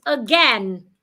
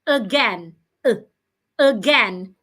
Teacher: The first A in that word makes the schwa sound.